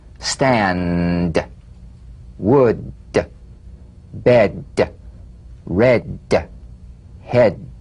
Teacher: D D D D cognate voiced tongue front palatal stop consonant Play This D drum beat on the springing away of the tongue from the upper gum Ridge feel a pulsation in the tongue D D D D D